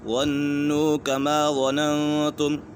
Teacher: ظَنُّوا كَمَا ظَنَنْتُمْ، یہاں پر اخفاء کا قاعدہ لگ رہا ہے، نون ساکن کے بعد تا حرف اخفاء میں سے ہے تو یہاں غنہ ہوگا